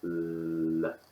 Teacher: the tongue is completely touching the alveolar Ridge